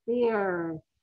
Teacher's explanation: There's no puff in it because it's just an F sound